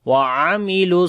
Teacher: آمنوا وعملوا، عین کو گلے کے درمیان والے حصے سے پڑھیں گے